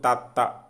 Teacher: మన నాలుక దంతాల మధ్య ఉండడం జరుగుతుంది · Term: దంత్యాలు